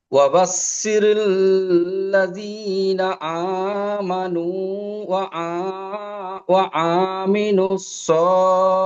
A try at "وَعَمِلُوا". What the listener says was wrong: ওয়া আ, টান হয়ে যাচ্ছে। ওয়া আ টান হবে না। ওয়া আমিলুস সলিহাত।